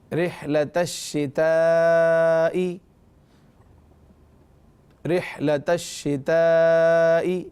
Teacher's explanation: تو یہاں پر شتائی، یہاں دیکھیے تا الف زبر تا، یہ ہو گیا الف مدہ، الف سے پہلے زبر ہے تو الف مدہ، اور اس کے بعد حمزہ اسی کلمے میں ہے شتائی، حمزہ اسی کلمے میں ہے تو یہاں مد متصل ہے، بڑا والا مد لگا ہوا ہے جو شکلاً بڑا ہے، اسے 2، 2.5، 3، 4 الف تک کھینچ کر پڑھیں گے